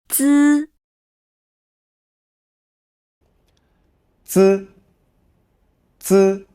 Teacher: the tip of the tongue presses against the back of the upper front teeth, obstructing the airflow. A weaker stream of air then forces its way past this obstruction, squeezing through a narrow gap and creating a sound through friction.